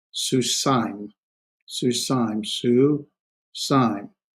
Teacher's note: That is a diphthong, and this would be susaim, susaim, susaim. That's the two vowels are pronounced as one, and it's one sound